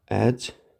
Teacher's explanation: Sözdəki qoşa saitlər yazıldığı kimi tələffüz olunur. Xeyr, bu ənin biri düşür tələffüzdə